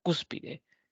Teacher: la palabra Cúspide es una palabra trisílaba tiene tres sílabas y la mayor fuerza de voz recae en la antepenúltima sílaba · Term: palabras esdrújulas